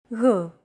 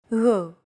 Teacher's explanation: It's like a very soft, continuous, and loosely held G, almost as if you're gargling, but don't make it sound too throaty. Γ. There's no such sound in English, but most people would transcribe this using the letter G, because that's the closest equivalent in English.